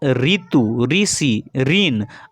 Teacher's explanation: ऋ का हिंदी में शुद्ध प्रयोग नहीं होने के कारण ऋ र प्लस ई के उच्चारण के रूप में प्रयुक्त होने लगा है